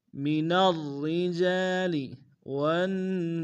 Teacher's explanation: من الرجال والنساء، ون میں واو کو نون ساکن کے سامنے آنا، نون کے اوپر تشدید زور دیں گے، سین کی سیٹی باریک، سین کے ساتھ الف مدہ ہے، الف مدہ کے اوپر مدہ متصل ہے، کم سے کم 3 الف کی مقدار میں کھینچیں گے